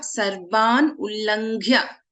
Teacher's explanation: we have gha mahaprana in ullanghya, and rest all are alpa pranaksharas.